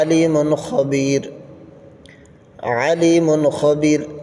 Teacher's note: نون ساکن اور تنوین کو خوب ظاہر کر کے بغیر غنہ کے پڑھیں گے۔ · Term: اظہار